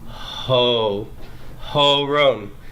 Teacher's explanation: you're gonna hear the friction of the H as long as you're producing the the O sound as well